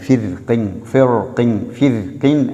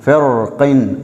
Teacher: ஃபிர்கின் ஃபிர்கின் என்று மெல்லினமாகவும் ஓதலாம், ஃபிர்கின் என்று வல்லினமாகவும் ஓதலாம் என்ற கருத்து தஜ்வீத் கலை அறிஞர்களால் எங்களுக்கு சொல்லித்தரப்படுகிறது.